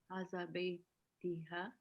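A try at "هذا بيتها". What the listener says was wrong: Hada? You say Hada. Why are you giving it kasra? Beitiha. Why are you saying Beitiha? Hada? Hada Beituha.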